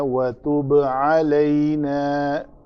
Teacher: با کے اوپر قلقلہ کیا ہم نے